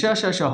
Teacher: निकलती है क्योंकि जब इन वर्णों को हम बोलते हैं तो हमारी जिहुआ और ताल आपस में टच कर जाती है और हवा उसके बीच से घर्षण करती हुई निकलती है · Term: संघर्षी व्यंजन